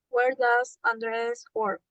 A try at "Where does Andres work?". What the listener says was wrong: Please ask the question correctly, please. The intonation.